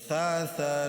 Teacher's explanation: دانتوں کے نیچے پڑھنا ہے، دونوں دانت کے بیچ میں زبان کو لے کر آنا ہے۔